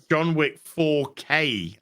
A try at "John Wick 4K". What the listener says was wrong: Well, it sounded like 4. You kind of ran the words John Wick 4, and then K kind of just hung.